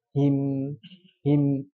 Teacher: ada sedikit dengungannya yang panjang